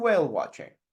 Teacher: feel how the voice is going up, up with the first 2 options and goes down